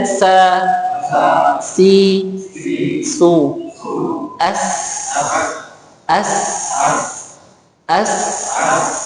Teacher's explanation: Kita coba belajar huruf sin dulu. Nah, ujung lidah pada posisi dua gigi seri bawah. Lalu suara keluar melalui celah di antara dua gigi seri atas dan bawah.